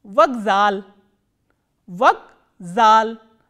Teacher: K, which is a voiceless consonant, has been pronounced as its voiced counterpart, which is G